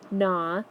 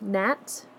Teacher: GN, which the G would be silent and you would only hear the N sound